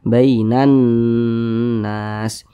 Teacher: Maka alif lam berjumpa dengan huruf nun, hukumnya alif lam syamsiyah, sehingga huruf lamnya dibaca idgham. Huruf lamnya tidak dibaca di sini, langsung masuk ke huruf nun.